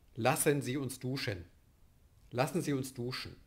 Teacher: weil der Vokal, das Schwa, ausfällt, übernimmt der Nasal die Silbigkeit. Weshalb wir diese Silbigkeit anzeigen müssen mit diesem kleinen Strich unter dem M oder N, was Sie hier sehen. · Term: silbisch realisiert